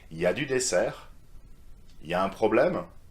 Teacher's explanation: Very often in familiar context, French people say ya, so you completely drop the il in front